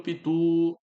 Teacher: perceba que o tu é a sílaba forte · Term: acento tônico